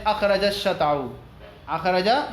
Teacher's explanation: اخرج شطأه، یہ کون ہے، جیم اور شین دونوں قریب المخرج ہیں، اس کا ادغام کر دیا گیا